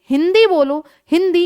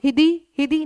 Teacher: वायु आपकी नासिका से और मुख दोनों से निकल रही है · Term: अनुस्वार